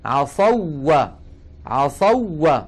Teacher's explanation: نحن قلنا في درسنا الماضي إذا اجتمع مثلان والأول ساكن وجب الإدغام إلا أن يكون الأول من الحرفين حرف مد. فهنا كان الأول واو ساكنة لكن قبلها مفتوح، ليست حرف مد، لذلك الإدغام حاصل. وقرأنا ونعيد الآن: عصوا عصوا، وهكذا ندغمها.